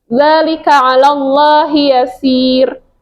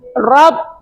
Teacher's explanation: rnya tipis aja beda halnya ketika dia tebal